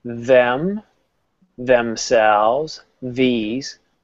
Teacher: they're voiced you can feel the vibration